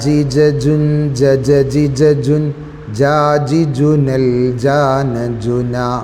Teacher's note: നാവിൻ്റെ സെൻറ്റർ ഭാഗം മേലെ അണ്ണാക്കിലേക്ക് ചേരുന്നു.